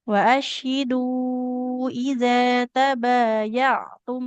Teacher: Ta-nya nggak boleh panjang. Dhammah tidak bertemu dengan huruf waw di situ.